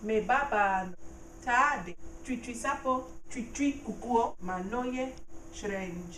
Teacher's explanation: Note that the second syllable of tri is high, and of ye is also high in the sentence.